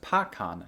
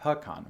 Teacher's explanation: language called Cree, where it was actually pronounced /pɑkɑn/, not /pɪˈkɑn/, with an /ɑ/ vowel instead of an /ɪ/ [ə] vowel